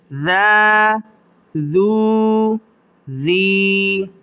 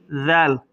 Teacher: دونوں دانتوں کے درمیان زبان کو دیں گے تو یہ ذال نکل آئے گی، زال نہیں، ذال۔